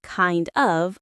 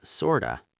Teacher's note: The word of usually sounds like a. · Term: reduction of of